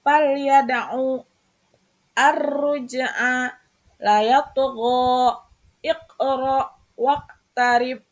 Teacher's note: Cara membacanya dengan memantulkan suara agak ringan, harus bergerak dan berbunyi seperti membalik. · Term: qalqalah sugro